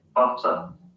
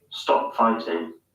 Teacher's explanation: T sounds are pronounced as hard Ts. In other words, voiceless T sounds.